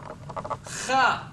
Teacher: friction, as the air rubs against the roof of my mouth